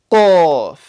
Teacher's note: So right from the back of the mouth.